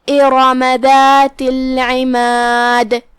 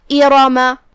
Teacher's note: حمزہ کی ادائیگی حلق کے نیچے والے حصے سے ہے